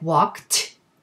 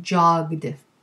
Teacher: It's either with a voiceless t after voiceless verb endings like walked, or with a voiced d after voiced verb endings like jogged.